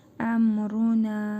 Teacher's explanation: nun hərfində yenə məddi münfasıl qaydasıdır. Nun hərfini dörd əlif miqdarı uzadırıq.